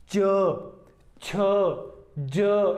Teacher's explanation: पहले स्पर्श हुआ, 2 अवयव आपस में स्पर्श किया, उसके बाद घर्षण के साथ जो है इनका उच्चारण होता है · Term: स्पर्श संघर्षी